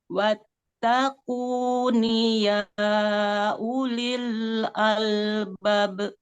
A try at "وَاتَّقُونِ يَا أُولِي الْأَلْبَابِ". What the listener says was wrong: Panjangkan. Albab.